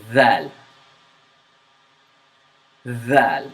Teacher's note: If you notice, I am exaggerating my tongue a little bit, but you need to do that in order to understand that dhal is characterized by your tongue sticking out from between your teeth a little bit. · This is pronounced from the tongue, and it's characterized by the tip of your tongue meeting the edge of the front upper teeth, and the tongue sticks out a little bit